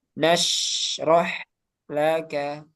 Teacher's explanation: Rokhawah di sini ada shin, ada ha. Jadi shin sama ha lebih panjang alirannya.